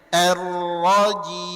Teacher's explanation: Mimnya di akhir ngalirkan sedikit.